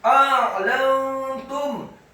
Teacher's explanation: A'lantum, alifnya dibaca fathah satu harokat, kemudian ainnya dibaca sukun ditekankan keluar dari tenggorokan